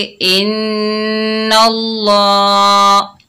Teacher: ज़बर की वजह से अल्लाह का लाम मोटा पड़ा जाएगा